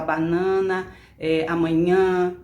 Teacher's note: o ar sai pelo nariz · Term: nasais